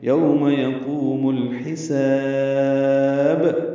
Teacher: لام ساکن پہ اظہار قمری، ہا وسط حلق سے ادا ہوگا، سین کو صفیر کی آواز سے ادا کرتے ہوئے لمبا کریں گے، یہ پتلی سیٹی کی آواز ہوگی، یوم یقوم الحساب.